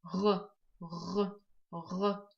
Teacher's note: Звук Г образуется за счет воздушной струи, проходящей через щель между задней частью спинки языка и мягким небом. При произношении происходит небольшая вибрация голосовых связок.